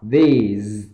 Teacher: cái từ these này các bạn nhớ âm TH luôn luôn để dưới hàm răng và âm Z là sau